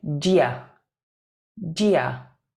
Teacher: Notice the do you gets squashed together. We say dia, dia.